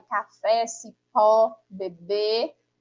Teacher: oxítona, que são quando as palavras têm aí a sílaba tônica na posição de última sílaba